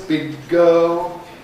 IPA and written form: ˌbɪg̚ ˈgɜːl (big girl)